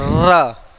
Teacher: तो जो हमारी जीभ होती है पूरा वाइब्रेट कर जाती है ना, इसीलिए इसे प्रकंपित वर्ण कहते हैं।